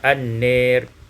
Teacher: imalatu fathatin nun wal alif, imalah fathah nun dan alif, sehingga kita baca an-nir